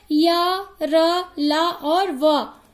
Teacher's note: जीभ मुंह के किसी भाग को दूसरे को पूरी तरह स्पर्श नहीं करती, इसलिए इसे अंतस्थ व्यंजन कहा जाता है। इसकी संख्या 4 होती है, य, र, ल और व।